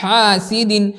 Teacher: ہا درمیانی حلق سے نکلتا ہے